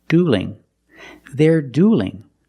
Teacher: Now the L in dueling is between vowels, so we have to change that L to a light L. So it's not dueling, it's dueling.